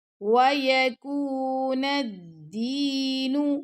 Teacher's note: نون کو ہم نے ڈائریکٹ دال سے ملا دینا، اور دال کے ساتھ یا مدہ آ رہی ہے تو دال کو ہم 2 سیکنڈ تک لمبا کریں گے۔